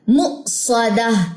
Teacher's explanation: حمزہ جزم پہ جھٹکا آتا ہے